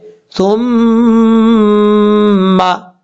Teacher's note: ہے میم کے اوپر غنہ کرنا ہے، کیونکہ میم مشدد ہے، میم مشدد جو ہوتا ہے وہ غنہ کے ساتھ پڑھا جاتا ہے، یعنی ایک الف کی مقدار یہاں پہ غنہ کریں گے